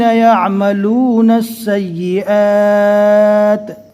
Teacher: اب ہم پہلے والے حرف کو دیکھتے ہیں تو حرف مد، یعنی یہ الف کو کھینچ کر پڑھا جاتا ہے، حرف مد کے بعد والے حرف پر جزم آ گیا رکنے کی حالت میں، اس لیے یہاں پر مد عارض وقفی ہوگا۔ اس کو کم سے کم 3 الف کے برابر کھینچ کر پڑھیں گے۔ یعملون السیئات، حرف مد کے بعد اگر جزم آتا ہے تو اس کو مد لازم کہتے ہیں، لیکن یہاں پر جو جزم آیا ہے وہ وقف کی وجہ سے آیا ہے، لہٰذا اس کا اصل نام جو ہے مد عارض وقفی ہے۔